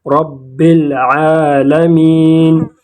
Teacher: لام کو ظاہر کریں گے، جیسے یہاں پر ہے رب العالمین، عین کے اوپر کڑا زبر ہیں، اس کو 2 حرکات کھینچیں گے